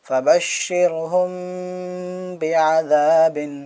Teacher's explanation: میم ساکن کے بعد با آیا تو یہ اخفائے شفوی ہوگا، آواز ناک کے اندر گونجے گی